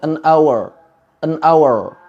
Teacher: huruf r dalam bahasa Inggris ini tidak ada getaran tidak ada getaran pada lidah kita